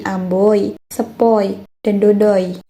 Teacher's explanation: Oi tidak dibaca dengan bunyi aslinya, tapi oi dibaca dengan bunyi Y